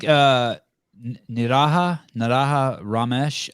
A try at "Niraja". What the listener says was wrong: think it would be Niraja, but I don't think the J would be silent. I could be wrong though.